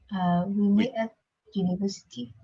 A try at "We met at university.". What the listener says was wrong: Okay, even weaker. We met at university. So almost you don't pronounce this at all. It's almost like you just pronounce this as a sort of sound. Okay, so not at.